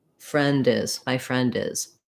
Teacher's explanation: I'm going to say that D because it's going to link to the word is. So it's going to sound like friend is, my friend is.